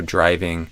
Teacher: this D, when it's before an R, can become kind of like a J